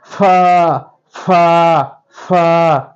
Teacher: ফার উচ্চারণ অবশ্যই দুই ঠোঁট কখনো মিক্সড হবে না